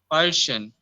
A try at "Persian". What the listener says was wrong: No, again you are saying sure. It is sir. Per sir. Person. Like we have a sum. We do not have asham.